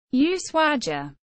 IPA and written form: uˈswaʝa (Ushuaia)